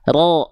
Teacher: Dalam harokat dasar, ro dibaca tebal ketika dia berharokat dhammah dan ketika dia berharokat fathah. Makanya ketika fathah, huruf ro dibacanya bukan vokal a kan ya, tapi vokal seperti o ya. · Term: huruf yang tebal